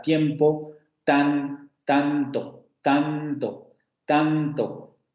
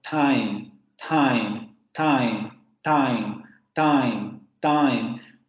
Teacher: pero en francés como en español este fonema va a ser una dental oclusiva sorda